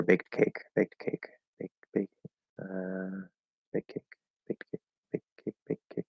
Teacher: there's supposed to be a T there because the T and the K will clash, right? They're both stop sounds.